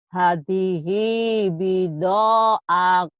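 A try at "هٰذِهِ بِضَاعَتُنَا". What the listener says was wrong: Kalau ada patah berdiri panjang nggak ya Bu ya? Panjang. Ibu baca pendek kayak hadihi. Hi-nya juga panjang karena ada yang patah. Pokoknya setiap ada patah berdiri, ada doma terbalik, itu panjang. Hadihi bida'atuna.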